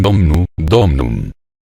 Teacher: El latín clásico, para decirlo a nuestra manera, era riquísimo en palabras esdrújulas, cuya penúltima sílaba, la que seguía a la acentuada, tenía una vocal breve, de tan corta duración que llegó a ser imperceptible. El latín vulgar anuló esas sílabas penúltimas, y dominum quedó en domnum.